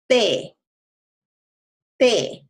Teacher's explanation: But the tongue is kind of spread out along the roof of the mouth when we go talk or territory. However, when we say the Spanish te, you end up curling your tongue.